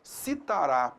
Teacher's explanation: Ox significa último, tá legal? Então a tonicidade recai sobre a última sílaba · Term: oxítona